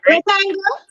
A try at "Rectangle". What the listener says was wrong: That sound like you're asking a question. The tone sound like when I ask me a question. I'm here ask the question, we did the answer.